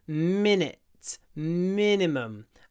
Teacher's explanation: the I is almost lost between the stretchy M and the stretchy n